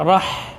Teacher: Kenapa ra-nya tidak bergetar di sini? Karena bertasydid. Ya. Jadi tidak ada getarannya, ya, disembunyikan.